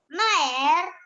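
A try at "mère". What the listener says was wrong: No. Mare. Only A sound. Ear sound is not there. It is not mare. Mare.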